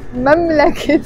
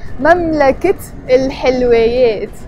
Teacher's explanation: when I added a noun to it, in this case حلويات, sweets, I pronounced the تاء مربوطة and I said مملكة الحلويات instead of مملكة الحلويات.